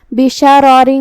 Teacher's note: کلمت بشرارن میں یہاں شین پہ اور را پہ دونوں پہ زبر ہے، لہذا ہم یہ دونوں حرکات کو برابر سے ادا کریں گے۔ جو کہ را پہ زبر ہے تو را کا حکم ہے تفخیم، ہم حرف الرا کو بھاری آواز میں پڑھیں گے، اور دوسرے والے را کے نیچے تنوین زیر ہے، تو یہ والے را کو ہم ہلکی آواز میں پڑھیں گے، کیونکہ یہاں را کا حکم ہے ترقیق۔